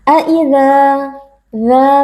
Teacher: pada huruf dza terdapat Mad Thobi'i karena ada Alif yang sebelumnya berharakat fathah kita baca panjang dua harakat